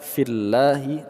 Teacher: Ju panjang dua harakat, na panjang dua harakat, fillahi. Lafaz Allah kita baca secara tarqiq atau tipis karena huruf sebelumnya berharakat kasroh.